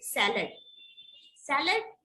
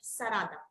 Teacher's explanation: There is no la sound. La, L sound is replaced by R.